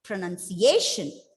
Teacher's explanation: The stress is on the third syllable.